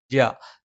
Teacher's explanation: നാവിന്റെ മധ്യഭാഗം മേലെ അണ്ണാക്കിലാണ്